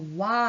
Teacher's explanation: 와라고 발음할 때 처음에 오처럼 발음할 것 같다가 아로 끝나죠. 그러니까 모양이 한번 바뀌어서 나타나는 거예요. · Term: 이중 모음